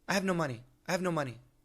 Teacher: N-O in the middle of a sentence sounds really short.